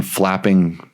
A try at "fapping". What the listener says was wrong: It wasn't flapping. Drop the L.